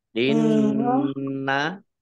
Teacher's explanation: Inna nun tasdid dibaca gunnah atau mendengung, ditahan 2 harokat.